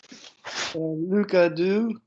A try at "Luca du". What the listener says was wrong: No. There's no vibration.